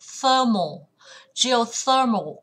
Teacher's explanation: Geothermal cũng vào âm tiết thứ 3